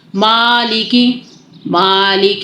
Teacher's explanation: मां की आवाज आनी चाहिए मैं की आवाज नहीं आनी चाहिए